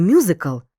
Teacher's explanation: сполучення пом'якшеного м і голосного у яке вимовляємо м'яко і злито тому апострофа тут не може бути запам'ятай апостроф - це графічний